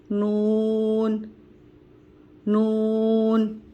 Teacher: نون کی ادائیگی کرتے وقت ناک میں آواز نہیں جانی چاہیے